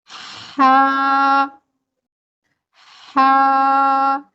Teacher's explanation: तो हा की अदायगी करते हुए भी हम दो सेकंड खींच हा को हम बारीक आवाज के साथ पढ़ेंगे हलक के दरमियान से अदा करेंगे · ہا کو ہم باریک آواز کے ساتھ پڑھیں گے، حلق کے درمیان سے ادا کریں گے، ہا ہا۔ آپ اگر یہ آواز سنیں، یہ پستی ضعف آواز ہے، یہ ہمس ہے، اور یہ ہا کی صفت ہے۔